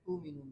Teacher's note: تؤمنون جب وقف کریں گے تو حمزہ واو سے تبدیل ہوگی